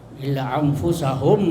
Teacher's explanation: Wama yakhda'una, itu juga mad tabi'i illa anfusahum, ya, anfusahum, ya, apa anfusahum, nun mati ketemu fa, apa anfusahum, bacanya apa, ada yang tahu, ya, ya, ya, ikhfa hakiki, ya, ikhfa hakiki, ya, agak dengung